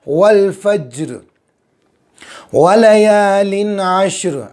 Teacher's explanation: आइन साफ निकालेंगे गले के बीच वाले हिस्से से